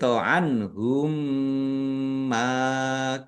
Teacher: Dibaca mendengung mim ditandai mimnya ada tasdidnya ditahan biar tampak mendengungnya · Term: idgham mimi